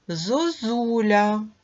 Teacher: ненаголошений о перед складом з наголошеним у вимовляємо з наближенням до у